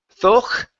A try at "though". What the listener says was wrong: okay, the GH is silent. The word is though.